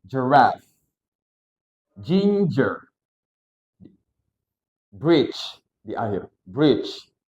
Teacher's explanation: Jadi dia gabungan dari d sama suara j. Ketika teman-teman menemukan suara seperti gini, langsung digabung aja.